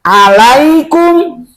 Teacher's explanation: Jadi ain itu makhrajnya dari tengah-tengah tenggorokan.